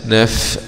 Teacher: فاء سكون مع الهمس